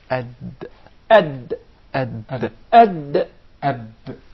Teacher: The gum line. So when the tongue hits and strikes this part, the gum line of the two upper front incisors, that is exactly the articulation point of the Dal